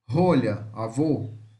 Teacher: semi-fechada posterior oral redondada rolha avô vejam que o som é mais fechado · O O com circunflexo semifechada posterior oral arredondada.